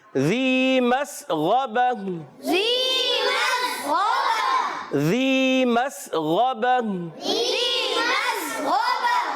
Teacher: یہ یا مدہ ہے، ایک الف کھینچ کر ادا کریں گے ، زال کی ادائیگی کلیئر کریں گے، زال کو زا کی